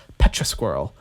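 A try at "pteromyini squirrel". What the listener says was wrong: Yeah, it's spelled like pterodactyl, but I'm assuming you just don't say the P, so it's a Terra squirrel.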